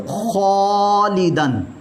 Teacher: पुर मोटा हरफ आ रहा है, लिहाजा अलिफ भी पुर मोटा पढ़ा जाएगा · कौफ के साथ ही अलिफ की अदायगी होगी, लिहाजा अलिफ जो है ये पुर मोटा पढ़ा जाएगा